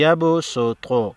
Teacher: صاد کے اوپر سین ہے تو سین کا مخرج یعنی سین کے مخرج سے ادا ہوگا، یعنی یبسط، سین ادا ہوگا، اس صاد کے اوپر سین ہے۔